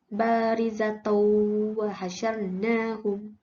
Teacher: Hukum tajwid yang pertama adalah idgham ma'al gunnah. Cara bacaannya adalah ia perlu didengungkan sepanjang 2 harakat.